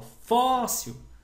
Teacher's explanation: quando eu falo fóssil, o fó é o mais forte, é uma paroxítona